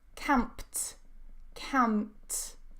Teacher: So I'm not pronouncing the p, I'm not releasing it.